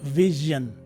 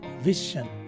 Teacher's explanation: the vowels I and O in the word are now replaced by a schwa sound. So this word is actually pronounced as vision as opposed to vision.